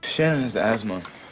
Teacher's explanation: With a TH, but it's just asthma with a Z sound. And the T is not even there.